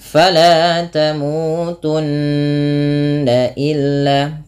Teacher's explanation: kemudian pfal tunna di sini ada bacaan gunah yang di mana cara membacanya yaitu menahan suara bunyi nnya sepanjang dua harakat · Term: bacaan gunnah